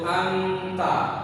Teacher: Anta dia tidak menuju kepada ta tapi tidak juga kepada nun mati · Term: Ifa